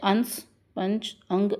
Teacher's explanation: इसके उच्चारण में नाक से अधिक सांस निकलती है और मुख से कम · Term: अनुस्वार